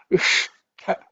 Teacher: second one in the ta varga with aspiration, extra air. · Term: cerebral ish